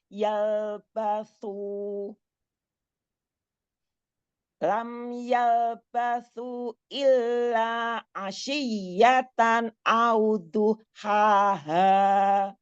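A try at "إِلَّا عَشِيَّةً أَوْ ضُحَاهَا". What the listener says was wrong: Panjangkan lagi mad jaiznya. Lam yalbathu illa asyiyatan aw duhaha. Illa asyiyatan aw duhaha. A-nya jangan panjang. Illa asyiyatan. Dialirkan sukun idharnya. Tanwinnya.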